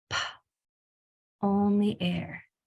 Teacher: the P is a voiceless sound. So when you say the sound of a P, there should be no voice used. So the sound of P is not pa. · So the sound of P is not pa. It's pa, only air. If you say pa, then that's 2 sounds, pa and ah.